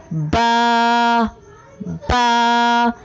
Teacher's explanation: با کی ادائیگی میں ہونٹوں کے گیلے حصے کو سختی سے ملا کر باریک آواز میں پڑھیں